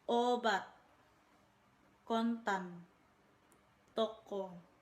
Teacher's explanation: Fonem O adalah vokal sedang belakang bulat.